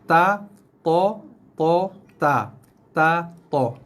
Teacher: Duduk pada makhraj yang sama, hujung lidah menyentuh belakang gigi kacip atas, gigi kapak kita. Okey. Keluarnya bunyi ta, nipis, to, tebal.